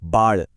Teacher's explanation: इसे बोलने के लिए जीभ को पीछे की तरफ ऊपर की तरफ मोड़कर तालू से लगाना पड़ता है।